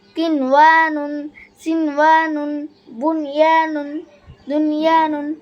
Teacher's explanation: একই শব্দে নুন সাকিনের বামে বাগুন্নার হরফ থাকলে গুন্না ছাড়া পড়াকে ইজহারে মুতলক বলে